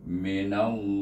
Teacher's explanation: Maka kita idghamkan dulu nun kepada lam jalalah itu dengan hukum idgham syamsi. Kemudian dibaca lam jalalah itu dengan tebal kerana nun baris di atas.